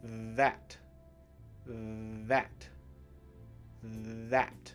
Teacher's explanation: when you say the th in that you should be able to feel the vibration right you can feel it tingling